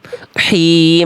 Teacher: nafasnya berbeda dari tengah tenggorokan, lembut bersih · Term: H kecil